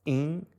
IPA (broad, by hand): ĩ